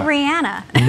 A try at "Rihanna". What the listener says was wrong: It's Rihanna like banana, but you sound like you're from Chicago when you say, hey, is that Rihanna over there?